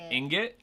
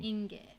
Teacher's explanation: Emphasis on the first syllable.